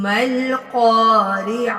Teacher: یہ گول تا جب وقت کرتے ہیں تو ہا کی آواز دیتی ہے